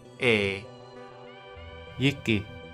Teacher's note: This is more like the vowel sound in bet, but with a bit more palatalization. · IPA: /jɪ/, /ɛ/